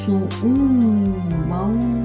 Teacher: tanwin ketemu waw itu dibaca dengung atau gunnah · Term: idgham bigun